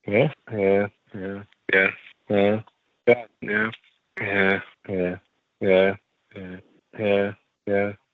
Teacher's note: speaker 6 in my data has quite a flat yeah